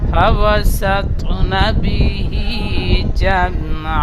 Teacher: তার মধ্যে একটা অক্ষর ত, ত অক্ষরটি পুর করে পড়বেন, ফাওয়াসাত। আবার তটি কলকলা হবে